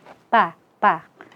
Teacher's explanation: tempat keluar hurufnya adalah ujung lidah bertemu dengan tempat tumbuhnya gigi seri atas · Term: huruf ta